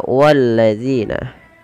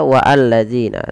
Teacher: Di sini ada bacaan alif lam syamsiyah, yaitu alif lam yang langsung diidghamkan kepada huruf lamnya. Maka walladzina, bukan dibaca wa'alladzina, tapi langsung walladzina.